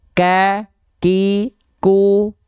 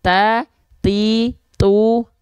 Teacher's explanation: jadi tertahan dulu baru keluar percikan jadi ada ek-nya dulu barunya keluar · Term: percikan nafas